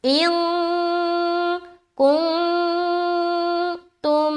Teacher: نون ساکین ہے اور اس کے بعد حرف کاف ہے تو یہاں پر اخفا کریں گے